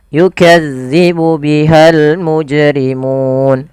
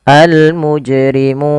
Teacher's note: di sukun panjangnya berapa harakat untuk Mad Arid sukun sendiri yaitu panjangnya adalah boleh dua harakat boleh pula empat harakat boleh pula 6 harakat contoh yukadzibu bihal mujrimun dua harakat almujrimun empat harakat atau almujrimun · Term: Mad Arid di sukun